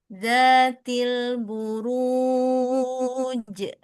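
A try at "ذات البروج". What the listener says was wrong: Ketika buka tutup berubah suara, maka ada ke hidung. Dan ini nggak boleh. Tebal ru. Zatil buruj.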